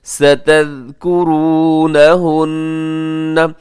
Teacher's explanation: زا نہیں بلکہ ذال ہے، بغیر سیٹی کی نرمی سے ادا کیجیے گا